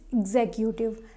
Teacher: Second syllable is stressed here.